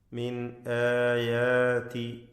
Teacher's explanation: മിൻ എന്നതിലെ സകിനാനൂൻ ഇൽഹാർ ഹൽഖി മണിക്കാതെ വെളിവാക്കണം